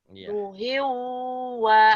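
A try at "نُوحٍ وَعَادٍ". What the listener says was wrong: no-nya panjang.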